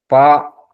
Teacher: పా దీని ఉత్పత్తి స్థానం ఓష్టము, ప్రయత్నము స్పృష్టము. 2 పెదవుల యొక్క స్పృష్టం అంటే స్పర్శ జరిగితే పా అనే అక్షరం ఏర్పడుతుంటది. కావున 2 పెదవులు కలిపి పలకవలయును పా అనే అక్షరాన్ని.